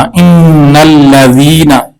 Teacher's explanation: یا مدہ کو ایک الف کی مقدار لمبا کریں گے